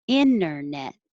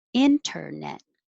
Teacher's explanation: Both ways are totally fine. Without the T, internet. With the T, internet.